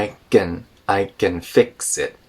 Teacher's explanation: can turns into a very reduced gun